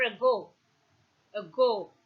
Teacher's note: the rp begins at the central position between half close and half open and moves in the direction of oh a back position between close and half close